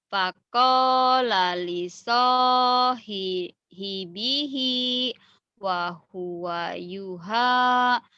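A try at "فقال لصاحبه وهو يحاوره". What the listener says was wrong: Tuh udah bener, cuman harus nyambung kalau Quran mah, nggak boleh putus, nggak boleh putus. Faqala li sa faqala li sahibihi wa huwa yuhawiruhu.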